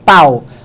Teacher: O A sempre é vogal. Quando você diz pau, você pronuncia tudo de uma vez. Aí você entende que esse U é realmente uma semivogal. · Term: ditongo